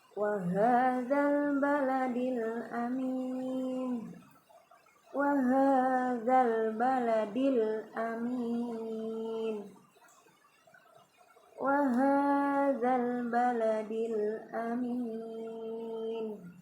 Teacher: Nah, ketika huruf lam di ini ya, namanya alif lam komariah ya, idhar komariahnya. Nah, di sini lamnya dibaca jelas ya, huruf L-nya itu, lam sukunnya itu dibaca jelas.